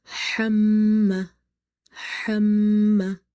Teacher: hamma plus alif is madda, so there will be a stretch